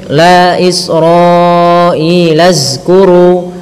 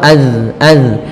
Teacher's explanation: Bagaimana caranya adalah ujung lidah kita tempelkan di lafal, ujung lidah kita menempel dengan gigi seri atas sehingga terlafal az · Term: makhraj huruf zal